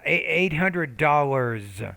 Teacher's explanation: the S sounds like a Z at the end of that word because it comes after a voice consonant.